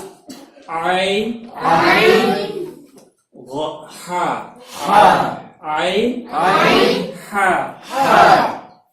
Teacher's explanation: आइन हमजा नहीं अदा होना चाहिए यहाँ। हमजा जैसे हमजा जबर आ, आइन हा, आइन हा।